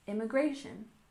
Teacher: stress the third syllable immigration